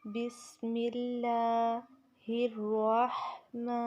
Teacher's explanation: ہا کو را کے ساتھ تیزی کے ساتھ ملائیں گے اور ہا کو وسط حلق سے نکالیں گے